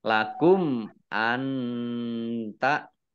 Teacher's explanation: Nun sukun bertemu dengan huruf ta, bacaan ikhfa dibaca samar-samar. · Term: izhar syafawi